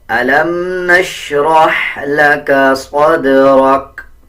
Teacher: اکثر لوگ صاد اور سین میں کوئی بھی فرق نہیں رکھتے بلکہ صدرک پڑھ دیتے ہیں، صدرک نہیں، صاد کو موٹا پڑھیں گے، دال پہ قلقلہ کریں گے، اسی طرح را کو پر پڑھیں گے یعنی موٹا پڑھا جائے گا۔